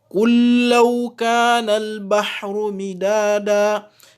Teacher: Donc, le lam qui est là, c'est un lam soukouné, c'est le lam du verbe dire. Ce lam là, il ne doit pas être lu, on doit l'assimiler, on doit passer directement dans le deuxième lam qui porte la shadda.